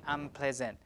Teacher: n will change to an M because p is bilabial